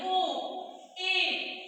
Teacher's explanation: अर्धसमृत स्वर का मतलब होता है जब इसका उच्चारण करेंगे ना तो हमारा मुख आधा बंद होगा। आधा कैसे बंद होगा, जब इसको बोलिए, इसका उच्चारण करिए ओ, ए, यानी पूरा बंद नहीं हो रहा है, बल्कि आधा बंद हो रहा है, आधा पूरा कर रहा है, ठीक है।